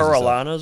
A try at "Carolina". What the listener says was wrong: It's not an A. It's a U. Carolina.